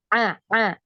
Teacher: ain ya ain dari tenggorokan bagian tengah